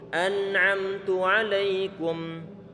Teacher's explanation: Walaupun dia adalah izhar, tetap memiliki sifat gunnah adalah adanya getaran di hidung kita di saat mengucapkan coba di saat antum mengatakan hidung antum bergetar. Yang bergetar itulah sifat gunnah yang keluar dari khayshum, yang keluar dari hidung.